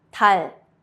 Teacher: Your tongue touches the top of your mouth briefly.